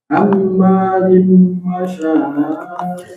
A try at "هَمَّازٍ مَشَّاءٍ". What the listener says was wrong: Shinnya ada tasydidnya.